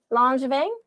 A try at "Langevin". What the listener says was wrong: You can pronounce it that way if you want. It sounds better. It's actually Langevin with like a hard G.